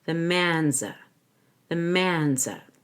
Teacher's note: Man's will end in a Z sound because it follows the voiced consonant N. But I want to link Z to the article so it's Z.